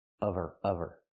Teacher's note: we need the V sound in of because we don't pronounce the H in her. We link the sounds.